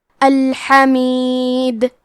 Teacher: ہم یہ کلمہ پہ رکے تو دال پہ جزم سے رکیں گے تو یہاں دال کا حکم ہوگا قلقلہ تو ہم یہ حرف کو ہلاتے ہوئے یہ کلمہ کو پڑھیں گے